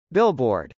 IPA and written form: bˈɪlb.ɔːrd (billboard)